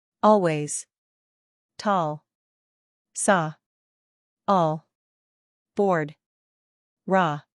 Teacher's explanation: the jaw is open more and tongue is low near the floor of the mouth